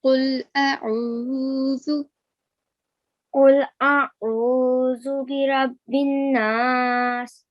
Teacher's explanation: Make sure that you don't make a thick sound for alif. Okay, alif has a thin sound.